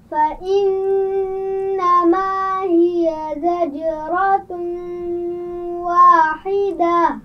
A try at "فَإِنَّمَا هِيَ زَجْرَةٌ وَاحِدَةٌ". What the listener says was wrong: زجرۃ، زا کے مخرج کا خیال رکھیے، اس کی آواز میں سیٹی ہوگی. زجرۃ واحدہ.